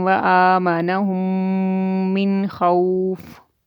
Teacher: حروف حلقی میں سے خا آیا ہے تو یہاں پہ اظہار کریں گے، اخفا نہیں کریں گے